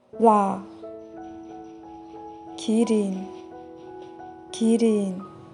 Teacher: There is no exact match for real in English. It's somewhere between L or R sound.